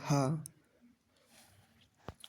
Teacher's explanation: मुख गुहा खुली रहती है और वायु बंद कंठ को खोलकर झटके से बाहर निकलती है उसे काकल्य वर्ण कहते हैं।